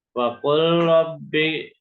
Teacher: Kemudian hukum yang berikutnya huruf lam dan ro. Makhrajnya sama, ujung lidah bertemu langit-langit depan. Ya, tapi ternyata bagian ujung lidahnya beda-beda. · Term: idgham mutaqaribain